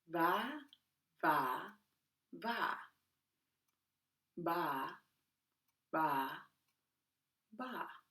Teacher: letter V place your top teeth on the back of your lower lip letter B seal both lips and pop